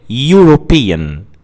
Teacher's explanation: European begins with a vowel letter which is e but it begins with a consonant sound y. European. So you say a European person rather than an European person.